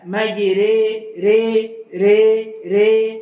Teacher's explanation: Imalah kubra dia adalah imalah yang lebih dekat kepada ya.